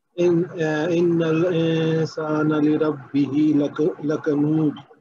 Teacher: इसमें इंसान में नून जो है वो गुन्ना करेंगे, क्योंकि उसके बाद जो है वो सीन है, तो इसलिए इसका जो है उसको 2 हरकत तक गुन्ना करके पढ़ेंगे।